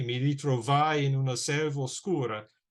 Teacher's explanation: you're going to have a stress on the 4th syllable and the 10th syllable. But the other syllables, there's no particular stress pattern that is enforced or required. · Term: hendecasyllable